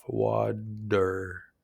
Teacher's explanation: Your tongue quickly taps the top of your mouth and then it drops off. Water. It's a very quick light sound. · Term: flap T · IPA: /ɾ/